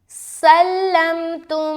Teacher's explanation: سلمتم، یہاں پر دیکھیں سین لام زبر سل، لام میم زبر لم، سلم، تا میم پیش، تم، یہاں پر میم ساکن کے بعد دوسری میم آ گئی، لہٰذا یہاں پر ادغام شفوی کا قاعدہ ہو گیا، میم کو میم سے ملا کر غنے کے ساتھ پڑھیں گے